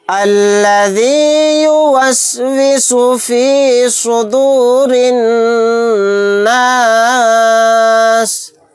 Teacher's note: صاد کو موٹا یعنی پر پڑھنا ہے، را کو باریک پڑھیں گے کیونکہ را کے نیچے زیر ہے، اور را کو نون میں ملا دیں گے، یہ الف اور لام نہیں پڑھا جائے گا۔